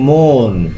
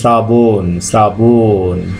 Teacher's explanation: অধ্বনি যখন ও এর মতো উচ্চারিত হচ্ছে তখন সেটা সংবৃত, আর অধ্বনি যখন স্বাভাবিক উচ্চারিত হচ্ছে তখন সে উচ্চারণ হচ্ছে বিবৃত উচ্চারণ।